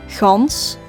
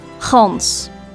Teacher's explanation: the southern part of the Netherlands pronounces the G in a rather airy way, gans, while the northern part of the Netherlands pronounces the G in a very harsh way